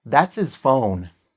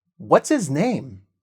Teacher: A lot of h's are cut at the beginning of words, especially when they are in the middle of a sentence. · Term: cut the h